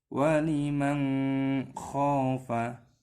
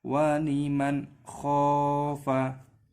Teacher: termasuk huruf hallet maka disini dihukumi izhar halqi cara membacanya adalah tidak boleh dibaca dengung harus dibaca jelas